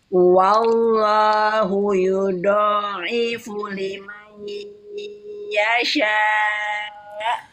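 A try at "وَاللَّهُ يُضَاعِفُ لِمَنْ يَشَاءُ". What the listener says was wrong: Ujung lidahnya jangan ditekuk, Bu. Jangan yudo. Bukan yudo. Dia e datar aja.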